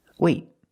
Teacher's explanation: I stop the air with my tongue in the T position